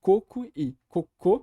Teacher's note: no português a diferença entre a palavra coco e cocô é marcada pela força expiratória